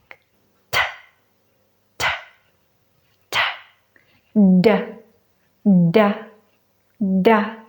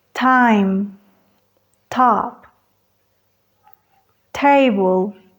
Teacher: en la T y D del español la lengua sube atrás de los dientes y en este caso van a la cresta alveolar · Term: consonantes alveolares